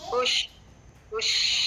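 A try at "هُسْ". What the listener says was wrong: Bukan hush lah. Hush kalau huruf sin. Ni huruf ni apa huruf sin saja. Kalau huruf shin jadi hush. Ni hus. H U S. Hus saja nah.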